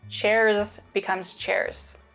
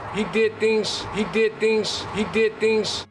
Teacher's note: you can hear this devoicing in the plural form of chair